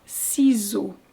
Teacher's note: So the S changes to a Z if in between vowels, even if they're not in the same word.